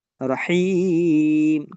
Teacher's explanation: এই যে জের এরপরে যজমালা ইয়া, রহিম, তখন এই মাদটাকে তিন আলিফ টেনে পড়তে হবে। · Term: মাদ্দে আরজি